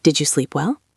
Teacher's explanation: Listen to the intonation. It goes up at the end because it is a yes-no question.